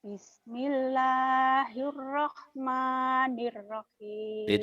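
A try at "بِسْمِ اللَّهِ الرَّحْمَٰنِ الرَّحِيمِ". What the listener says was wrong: udah bagus. Kamu tinggal naikin sedikit nadanya.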